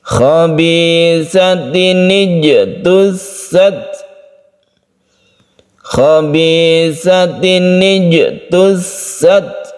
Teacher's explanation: Jadi sedikit saja ketika kita sukun ta, kita hembuskan nafas kita sedikit dan itu membentuk huruf S yang tipis. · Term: sifat hamas